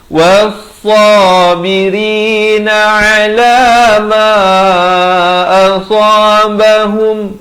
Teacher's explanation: Was-sabiri, ra jadi nipis, was-sabirina ala ma asabahum, idhar syafawi, jangan panjang, sempurnahum, terus masuk.